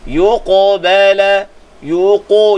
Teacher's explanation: Yuqabala min qaf qalqalah sughra. Qalqalahnya mesti ditebalkan sebab qaf itu ada sifat tebal, ada sifat isti'la.